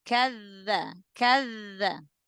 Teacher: gesekkan sedikit lagi huruf dzal